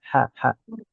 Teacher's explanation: Ha dan ain yaitu tenggorokan tengah. · Tengah tenggorokan itu kalau makhraj ha itu agak atas dikit